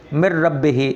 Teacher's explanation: غنہ کیے بغیر نون را میں مدغم ہو گیا, مکس ہو گیا. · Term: ادغام بلا غنہ